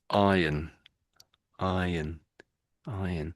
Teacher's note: For most Brits, the R is silent and it's just iron, iron, iron.